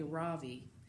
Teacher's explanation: in America people call me Ravi with the stress on the first syllable